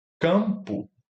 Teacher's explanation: E ele vai ser mã porque essa próxima consoante o pã é bilabial.